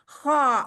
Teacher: लेकिन पीछे से जुबान की जड़ ऐसे ऊपर उठ जाती है। जुबान की जड़ उठेगी तो फिर ये ऑटोमेटिकली जो रास्ता है गले का वो थोड़ा सा बंद होगा तो आवाज भारी सुनाई देगी